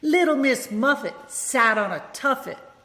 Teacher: I just stop the T sound. I don't release the T sound.